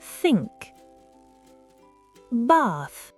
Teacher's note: Le TH sans voix, glissez la langue entre les dents et soufflez.